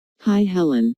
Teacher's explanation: Notice that the I sound in hi is extended to show that is very pleased to see Helen.